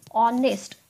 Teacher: it is not harnessed okay it is honest the H is silent here so the sound which is coming from honest itself is oh